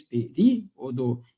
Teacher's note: Mas o som mais forte, de fato, né, é no ri. Aliás, por isso que é acentuada, né, a palavra período, porque ela é uma proparoxítona, tá?